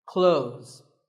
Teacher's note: When we say clothes, the TH in the middle can often be silent.